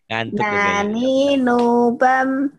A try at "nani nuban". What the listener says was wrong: Ban, nani nuban, bukan bam, nani nuban.